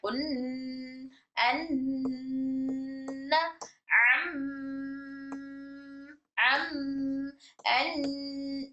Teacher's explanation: अब ये मीम और नून में अगर मीम और नून पर तजदीद आ जाए तो मीम और नून मीम और नून नहीं आम हरूफ नहीं बल्कि गुना वाले हुरूफ हो जाते हैं। तो गुना वाले हुरूफ होने की वजह से इनकी आवाज नाक से निकलती है। उन अनम अम अन इस तरह से अम अन इस तरह से नून और मीम की आवाज नाक से ना होती है।